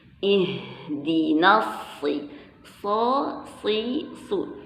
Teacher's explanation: Jadi huruf so ini dia letaknya dengan huruf sin sama ya. Jadi huruf so, yang membedakan hurufnya sa sama so cuman sifat hurufnya nanti.